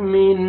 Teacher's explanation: فیہا بِإِذْنِ رَبِّهِم من، اخفا کریں گے، نون ساکن کے بعد حروف اخفا میں سے کاف ہے، من ناک میں آواز لے کے جائیں گے